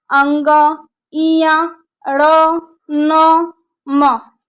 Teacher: ये सारी अक्षर जो हैं आपके नाक से निकल के आती हैं, इसीलिए इनको अनुनासिक वर्ण कहा जाता है।